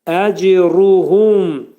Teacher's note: H burada hunun məxrəci boğazın aşağısından çıxarılacaq.